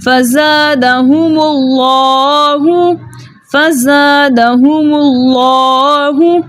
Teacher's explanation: فزادہم اللہ، یہ لام جو ہے لام جلالہ کا لام ہے، صحیح ہے، اور اس سے پہلے پیش ہونے کی وجہ سے اس لام کو ہم موٹا پڑھیں گے، اور ساتھ لام کے اوپر کھڑا زبر ہے، اس لیے اس لام کو ہم 2 حرکت کی مقدار کھینچ کر پڑھیں گے